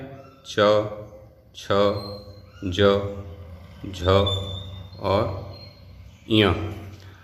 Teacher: ई का, चा का, छा का, जा का, झा का, या का और शा का, इनका उच्चारण स्थान तालु है।